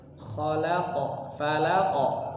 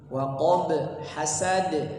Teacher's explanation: pantulan di setiap akhir ayatnya ada qalqalah kubra